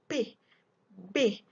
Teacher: The sound this stop or plosive sound made by building up air pressure and stopping of flow by lips, and then release it through the mouth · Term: stop or plosive consonant